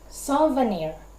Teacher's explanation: is anapest anapest is the upside of a ductal in that it has two unstressed syllables followed by one stressed syllable